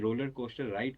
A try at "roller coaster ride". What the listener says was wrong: I feel like it's overpronounced. It was a roller coaster ride for me, so it's not pronounced naturally, and this makes me feel like it's a little bit of a piece of learnt language.